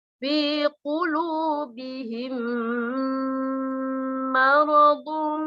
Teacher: Dibaca panjang 2 harokat. Hum ditahan 2 harokat, kemudian disertai dengung. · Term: idgham mimi